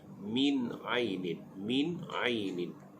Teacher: Dalam ayat yang kelima ini, dari segi sebutan min aini, nun mati bertemu dengan ain. Ain adalah huruf izhar. Kita nyatakan bunyi nun mati tersebut.